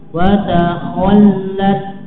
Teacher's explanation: wa takhall lamnya ditekan, wa takhallat ya, dan nggak boleh terlalu lama ya, sehingga seperti gunah wa takhall ini terlalu lama, cukup ditekan wa takhallat ya.